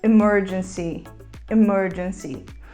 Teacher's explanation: nós terminamos a palavra com um I bem aberto